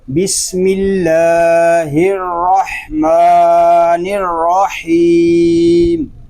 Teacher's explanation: اب اس کو بسم اللہ الرحمن الرحیم نہیں پڑھیں گے، را میں واو کی مشابہت پیدا نہیں ہونی چاہیے، کہ اس کو پڑھیں گے بسم اللہ الرحمن الرحیم۔